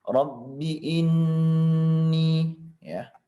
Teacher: Rabbi ini di sini perhatikan adalah gunnah musyaddadah. Ini sebanyak 2 harokat atau 1,5 ya. Jadi harus ditekan, digunakan.